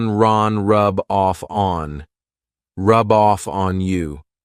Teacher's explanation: So here I'm taking the F from off and adding it to On